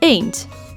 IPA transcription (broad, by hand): e:nd